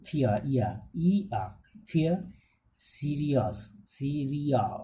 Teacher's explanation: The vowel glide begins from the positions of a centralized front rounded vowel above half close towards the positions of a central rounded vowel below half open